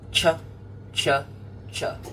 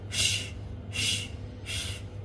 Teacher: CH is short and sharp. Ch, ch, ch. SH is longer and softer.